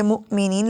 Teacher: ایک تو حمزہ ساکن کو جھٹکا دے کے پڑھتے ہیں